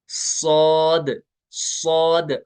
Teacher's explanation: जुबान जो है ना पीछे जुबान की जड़ जो है वो तालो की तरफ बुलंद होती है